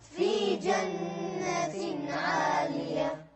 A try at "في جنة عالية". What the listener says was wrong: ما اسمع الهاء.